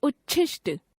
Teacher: यदि त द के बाद श व्यंजन आता है तो त द का च हो जाता है तथा श व्यंजन छ में बदल जाता है